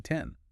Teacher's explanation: You start with a hard T where air is released forcefully through the teeth, open wide to that E